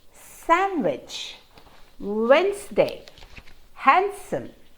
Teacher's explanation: all these words have a silent d in them